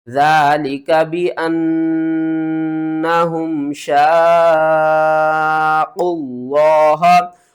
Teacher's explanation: बहुत से लोग ये गलती करते हैं कि लफ्ज़ अल्लाह को पुर करके नहीं पढ़ते। यहाँ पर आपने क़वाफ़ को भी मोटा पढ़ना है।